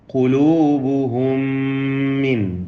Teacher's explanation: സാക്കിന മീം ശേഷമുള്ള മീമിൽ പൂർണ്ണമായും ലയിപ്പിച്ച് മണിക്കണം. ഇദ്ഗാം മിസ്ലൈനി സഗീർ അല്ലെങ്കിൽ ഇദ്ഗാം അൽ മുതമാസിലൈനി സഗീർ എന്നൊക്കെ പറയുന്ന ലയിപ്പിക്കൽ നൽകി മണിക്കണം.